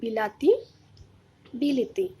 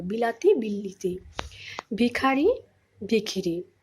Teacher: যেমন দেখো, বিলাতি, বিলিতি, আগে স্বরসঙ্গতি এবং পরের, আগের স্বরধ্বনি এবং পরের স্বরধ্বনি, দুটো স্বরধ্বনির প্রভাবে মাঝখানের যে স্বরধ্বনিটা ছিল আকার, সেটা কি হলো, একই স্বরধ্বনিতে পরিণত হলো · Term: মধ্যগত স্বরসঙ্গতি